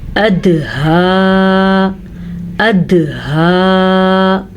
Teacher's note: दाल के ऊपर साकिन है तो यहाँ पे कलकला होगा। ऐसा तब होगा जब 5 हरूफ पे साकिन आ जाए।